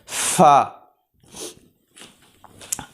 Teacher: ऊपर वाले जो दांत हैं उनके सिरे निचले होंठ के तर हिस्से को लगेंगे तो फ़ा अदा होगी